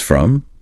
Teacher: from drops that round O and becomes from.